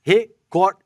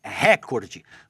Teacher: Recorde é uma palavra paroxítona, ou seja, a sílaba forte é a penúltima.